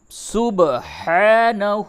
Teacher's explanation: با میں قلقلہ ہوگا، با ساکن ہے